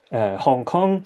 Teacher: some part of the vowel will become nasalized, and this is what we refer to as anticipatory nasal co-articulation. So to give you an example, if we say the word Hong Kong, then we have got the nasals at the end of each syllable here.